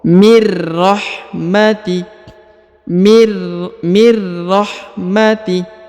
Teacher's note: Perhatikan, mir huruf nun sukun bertemu dengan ro bertasdid ya, maka huruf nunnya nun sukunnya menghilang dan melebur ke huruf ro. Mir rahmati, mir rahmati ya, langsung menghilang melebur ke huruf ro.